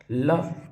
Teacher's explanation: ल पार्श्विक कहलाता है